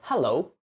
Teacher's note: for stress in English, for a simple example, we are going to say hello, so we stress the beginning